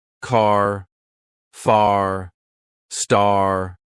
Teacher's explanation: They stretch the r to make it sound stronger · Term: Stretch the R sound